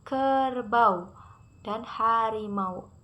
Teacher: A dan u-nya dibaca berbarengan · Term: diptong